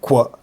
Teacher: a version of K that they write it with a little w, and it means that there's like rounded lips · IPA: kʷ